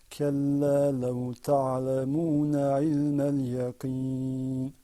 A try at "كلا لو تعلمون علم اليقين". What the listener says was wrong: كلا لو تعلمون علم اليقين. Okay, we want to focus on the same issue here. I want to hear you say yaqeen with the qaf. يقين.